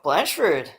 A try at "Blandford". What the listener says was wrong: you got to pronounce the D.